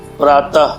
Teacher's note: इसका विसर्ग का उच्चारण ह के समान होता है, जैसे प्रातः, प्रो आकार देते हैं और तो में विसर्ग देते हैं, तो प्रातः हो गया।